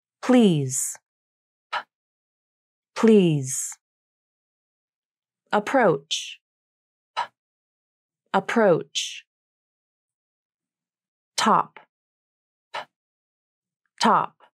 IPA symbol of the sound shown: p